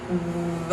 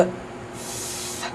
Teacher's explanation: So for example, if you make the sounds that correspond to the letters V and F in English, you make them the same way, v, f, but in the V sound, you're actually producing a sound with your vocal cords, and in the f sound, you're not